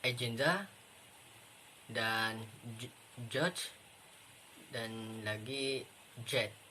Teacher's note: J itu adalah suara konsonan yang bersuara, yang dihasilkan dari pita suara bergetar saat suara dihasilkan.